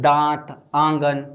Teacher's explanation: इसमें हवा मुख और नाक दोनों से निकल रहा है। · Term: अनुनासिक